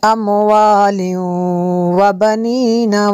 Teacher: तनवीन के बाद वाव है हुरूफ़ अनमालून में से, यहाँ पे इदगाम होगा इसलिए यहाँ पे गुन्ना करेंगे। अमवालिन व बनीना वयजअल लकुम, जज़म वाला और शद वाला इकट्ठे आ जाएं तो फिर शद वाले को पढ़ा जाएगा।